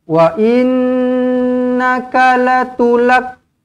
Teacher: Wa innaka latulak semua pendek. Nun di sini wajibul gunnah, dengungkan 2 harakat.